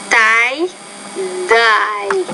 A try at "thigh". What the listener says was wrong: No, the thigh, you got to get the tongue between your teeth. We call this in English interdental consonant. So, thigh, thigh, thy.